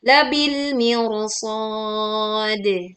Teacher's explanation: Dia itu didahului kasroh sebetulnya yang biasanya dibaca tipis tapi karena di depannya ada huruf tebal yaitu huruf shad dan lafad al-mirsad ini adalah satu kalimat, maka ro-nya pengecualian yang biasanya tipis menjadi tebal.